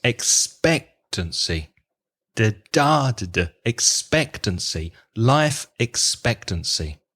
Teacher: stress on expectancy it has four syllables expect to see and you need to place the stress on the second syllable